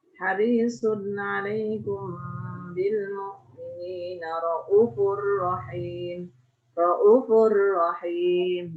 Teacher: Di halfil wawi. Membuang huruf wawu sehingga u-nya pendek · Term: halful wawi